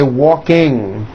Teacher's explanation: And I want you to realize that there is not a K sound. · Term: NG ending